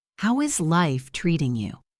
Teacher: Notice the melody as it goes down at the end.